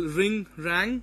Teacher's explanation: ring, rang, that's a voiced, velar and nasal sound